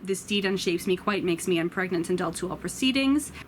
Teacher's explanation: lines have what is called a feminine ending which is where you have the iambic pentameter but then an unstressed syllable at the end of the line which makes it you sound like you're asking a question and